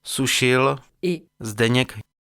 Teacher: les alvéolaires S et Z de Sušil, et Zdeněk